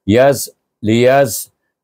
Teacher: Tak bunyi ya kerana dia bertemu dengan sin yang sukun.